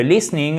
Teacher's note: c'est un I court et l'accent tonique est sur la première partie du mot